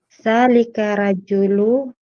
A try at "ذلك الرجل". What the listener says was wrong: ذلك الرجل. ذلك الرجل. may tasdid po yung ra. May tasdid po yung ra.